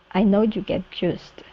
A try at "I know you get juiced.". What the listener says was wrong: Okay, give me a good Y there instead of you get.